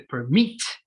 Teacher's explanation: Básicamente lo que significa es cuando tengamos palabras de dos sílabas en las cuales la mayor fuerza de voz se encuentra en la segunda de sus sílabas, como es el caso de permit, el acento está en mit